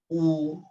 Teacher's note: Jadi kalau misalkan kita sempurnakan, dimulai dari fathah terbuka, terus kemudian kasroh didamparkan bibir bagian bawahnya I, terus kemudian dhammah dimonyongkan secara sempurna U, bukan U. Ya, bukan memonyongkan suara tapi memonyongkan kedua bibir sehingga dia lebih tajam